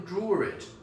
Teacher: So some people would say, draw it, when there is no R written down. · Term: invisible R